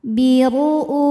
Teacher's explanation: huruf ra kita bunyikan secara tafkhim karena ra nya ini berbaris dhommah. Maka dibacanya tebal.